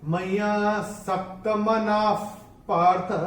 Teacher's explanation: और विसर्ग के बाद अगर पी या पी आता है तो विसर्ग का उच्चारण होता है एफ जैसे फूंक मारते हैं